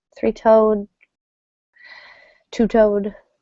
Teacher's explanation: a little more stress on toad in these hyphenated structures and they kind of function like one word so the number doesn't get stress and the second syllable gets lots of stress